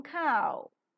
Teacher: towards the back rounded vowel just about the half close position the lips are neutral in the beginning and later they get slightly rounded oh yes they get rounded while the Glide is present so